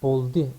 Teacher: Üçüncüde boldi oluyor. Üçüncü tekil şahısta şuna dikkat etmemiz lazım. Yuvarlaklaşma meydana gelmiyor.